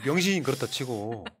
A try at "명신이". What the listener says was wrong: 명신이 발음을 제대로 해주세요. 병신이 아니고.